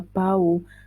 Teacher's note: gabungan vokal au pada bau bukan diftong karena menghasilkan dua bunyi